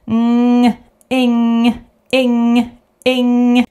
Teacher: So no sound g should be heard when you pronounce ing, not eng or something like that. · This is a nasal sound which goes through your nose, not through your mouth. So you try to send this sound through your nose, like with we also send the sound through the nose, but with ng is the same, but you have your mouth open. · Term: ng sound